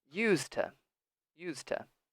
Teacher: So I remove the D, and now I can say it as one word. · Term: relaxed pronunciation